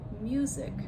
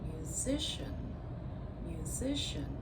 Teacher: music stress on the first syllable to musician stress on the second syllable